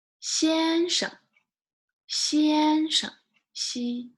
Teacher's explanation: you just say it like without tones but end very quickly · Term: neutral tones